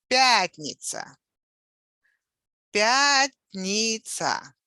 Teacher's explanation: The stress on the first syllable.